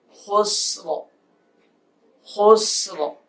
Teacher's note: را ساکن جب ہوگی تو خا کے اوپر پیش ہے اس لیے موٹی پڑھی جائے گی